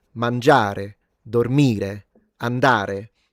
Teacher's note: And that is because of the it's called accento tonico in Italian, the fact that we tend to accentuate the penultimate vowel.